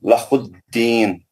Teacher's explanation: نون پر وقف کر کے مد عارض کر کے 6 حرکت لمبا کھینچ کے وہ مد اصلی نہیں بولنا.